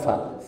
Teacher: fa itu memiliki sifat rakhwah mengalir